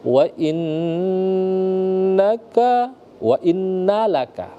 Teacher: Jadi wajibal gunnah. Jadi kita harus mendengungkan dengan dengung 2 harokat. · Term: gunnah musyaddah